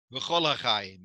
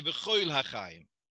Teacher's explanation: So here we have the word on its own is koil, but when it's connected, so it loses its independence and it loses its emphasis, and instead of a koil, it becomes kol.